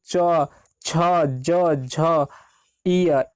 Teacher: जीभ हमारे तालु में सट जाता है, स्पर्श कर जाता है